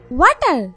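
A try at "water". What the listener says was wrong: ওয়াটার না, এটা ওয়াটার। ওয়াটার। জিহ্বার আগে সামনে দুই দাঁতের সাথে লাগবে। ওয়াটার, ওয়াটার। তাই তো, ওয়াটার রে ওয়াডা বলতেই আছেন। আমি সিটেঙ্গাও বুঝি, ইংলিশে সিটেং মিশাইয়েন না। এটা ওয়াটার। ওয়াটার, ওয়াটার।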